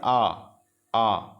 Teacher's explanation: खुला रहेला और जीभ को नीचे रहेला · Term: वितरित